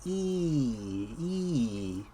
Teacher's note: Green, with green tea, it represents the high front vowel